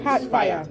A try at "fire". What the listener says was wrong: Fire. There's no R there. Why are you putting R?